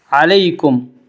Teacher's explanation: یا لین کو نرم آواز کے ساتھ جلدی پڑھیں گے